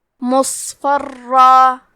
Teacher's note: کلمت مصفرن میں حرف الصاد پہ جزم ہے تو ہم صاد کو ظاہر کریں گے. صاد حروف التفخیم میں سے ہے، لہذا یہ حرف کو موٹی آواز میں پڑھنا ہے، اور کیونکہ یہاں صاد ساکن ہے تو ہمیں صاد کو ہمزے سے پڑھنا ہے.